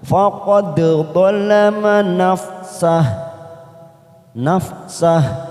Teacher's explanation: huruf dal sukun warna biru tua, qalqalah sugro kita pantulkan